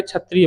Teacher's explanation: स, स ये ऋषि वाला स है, ये किससे होता है, मूर्धा से। तो यानी कंठ और मूर्धा से वायु टकराएगी तब जाके क्षत्रिय बोल पाओगे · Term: कंठ मूर्धन्य